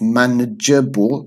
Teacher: I generally have a schwa because my accent is London accent